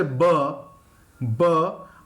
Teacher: my lip movement is same, but I'm using my voice